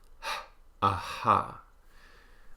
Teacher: and the unvoiced glottal fricative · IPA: /h/